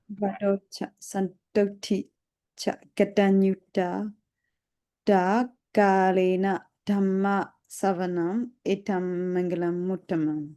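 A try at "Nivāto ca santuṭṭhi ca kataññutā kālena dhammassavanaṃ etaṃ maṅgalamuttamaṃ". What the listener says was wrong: Okay, that was very good.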